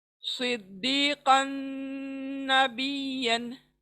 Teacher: तो कन के तनवीन को हम नून में मिला देंगे, शब्द में मिला देंगे और गुन्ना करते हुए।